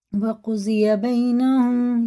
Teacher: یا ساکن سے پہلے زبر ہے، اور فعلین ہے، جلدی پڑھیں گے، کھینچیں گے نہیں۔ اور میم ساکن کے بعد با ہے، تو یہ غنہ اور اخفا دونوں کر کے پڑھیں گے۔